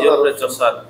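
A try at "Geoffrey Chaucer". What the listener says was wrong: এই উচ্চারণটা আমরা জিওফ্রে বলি, উচ্চারণ হয় জেফ্রি, জেফ্রি চসার।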